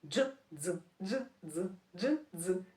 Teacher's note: Звук дзь. Звук дзь теж вимовляється злито, не окремо д, дзь, а саме дз.